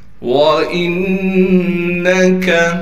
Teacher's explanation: وَإِنَّكَ، واو کو صاف طور پر ادا کرنا ہے، حمزہ کو نون سے ملائیں گے اس لیے کہ نون پر تشدید ہے اور نون پر تشدید ہونے کی وجہ سے نون پر غنہ کیا جائے گا۔ کاف کو باریک کر کے پڑھیں گے بغیر کھینچے۔